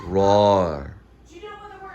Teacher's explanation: so the tongue falls downward and flat rather than curving upward